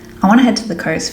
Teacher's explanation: we're going to get rid of our T sound and and we're going to change the U in two to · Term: wner